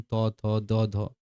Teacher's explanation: ব্যঞ্জনধ্বনি উচ্চারণের সময় জিভের ডগাটা উপরের পাটি দাঁতের মধ্যে লাগবে। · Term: দন্তব্যঞ্জন